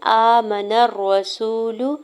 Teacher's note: حمزہ کے اوپر کھڑے زبر دو حرکت کھینچ کے ادا کریں گے۔ میم کے زبر کو بغیر کھینچے ہوئے ادا کرنا ہے۔